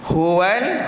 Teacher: Huruf ha kita hembus pada tengah pangkal kerongkong.